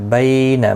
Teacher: بی یا لین ہے، تھوڑا نرمی کے ساتھ کھینچ کر ادا کریں گے، نہ کو کھینچنا نہیں۔